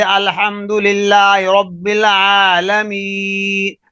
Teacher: یا مدہ بھی جوف دان منہ کے خالی حصے سے ادا ہوتی ہے